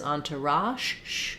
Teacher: it's like the sh sound but our voice is on